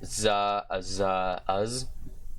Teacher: It's our first voiced fricative here, where we get Z, or the voiced alveolar sibilant fricative consonant